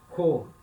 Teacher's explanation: Então, sempre que a letra Rho estiver no início da palavra, né, for a letra e começa a palavra, ela vai vir com uma aspiração, e é sempre uma aspiração forte, para indicar que o som do Rho é sempre um som aspirado no início da palavra. Ele é o som do R de carro, Rho.